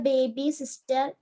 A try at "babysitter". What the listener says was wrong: Babysitter, not baby sister. Babysitter. Sitter, babysitter. Okay, not sister. It is sitter, babysitter.